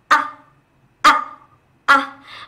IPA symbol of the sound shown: ʌ